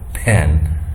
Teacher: aspiration is this burst of air escapes can be heard when we say words like pen. You see that the aspiration is heard, or this burst of air is heard.